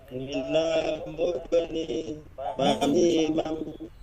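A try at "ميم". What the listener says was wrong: Tidak ada huruf ba di di depan.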